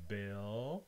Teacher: you have the dark L, bill, and the vowel I, as in bit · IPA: ɪ, [bɪɫ]